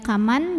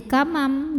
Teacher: Maka cara bacanya nun sukun ini dibunyikan diganti ya bunyinya dengan bunyi mim sukun. Jadi yang tadinya kaman jadi kamam, jadi m disertai dengungan. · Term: hukum iqlab